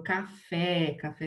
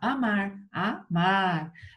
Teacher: A sílaba forte é a última. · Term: Oxítonas